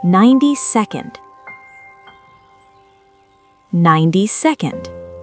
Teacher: Stress the first syllable. Und. The und is super fast. Combine them.